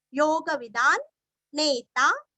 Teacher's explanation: अनुस्वार का उच्चारण आधा न